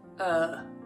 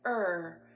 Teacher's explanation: if my tongue lays flat at the bottom of my mouth when I try to say R it sounds like uh